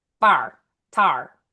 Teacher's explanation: these are going to be kind of tight and nasally. Fire becomes a little more like bar and then tire becomes like tar. Um so tighten nasily bar tar and stick them in your nose. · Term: flat vowels